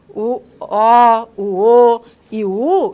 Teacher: essas vogais que nós chamamos de posteriores, como o O, o e o U, em que eu tenho aí um arredondamento das vogais